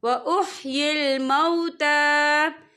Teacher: ता के पर खड़ी हरकत है, तो हम इसे 2 या 3 हरकत के बराबर खींचे पढ़ेंगे